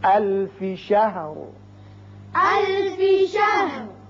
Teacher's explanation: لہذا یہاں وقف کریں گے، وقف کی صورت میں جب را ساکن ہوگا تو اس کو پر پڑھیں گے چونکہ پیچھے زبر ہے